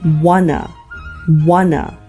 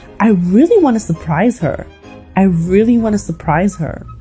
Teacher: when the words want and two are next to one another the T at the end of want and at the beginning of two both become silent then the O in two takes on a schwa sound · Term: connected speech